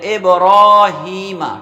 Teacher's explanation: ہا کو ایک الف کھینچیں گے، ابراہیمہ، ٹھیک ہے؟